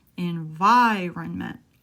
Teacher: Now, environment is a long word. Environment. I'll stress vir.